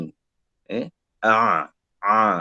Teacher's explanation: Ain ni dia tengah, jangan masuk hidung. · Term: huruf ain